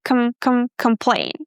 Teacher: Imagine that you go from the sound cu to the sound mm right away.